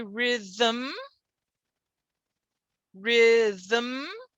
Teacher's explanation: m can be syllabic without a vowel · this is a syllable without a vowel right because the m is being syllabic